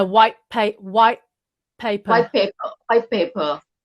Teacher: You drop one sound of that, like white paper. You drop the T, yeah.